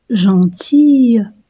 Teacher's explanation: les lèvres sont tirées à cause du I